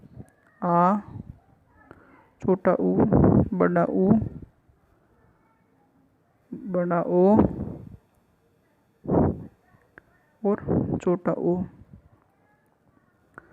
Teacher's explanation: पश्च स्वर जीभ के पीछे वाले भाग से उच्चारित होता है